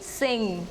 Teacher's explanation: The 19th consonant is the sound, as in sing. It is described as a voiced velar nasal sound.